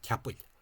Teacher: the M seems to have dropped off, and this was pronounced Capwell